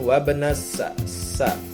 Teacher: hukum alif lam samsiah. Karena alif lam bertemu dengan huruf samsiah yaitu sin